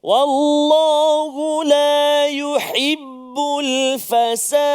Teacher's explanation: Maknanya kita kena jelaskan makhraj huruf ha, letak dekat mana? Tengah rongga halqum kita ni.